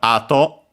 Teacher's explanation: Accent on the first mora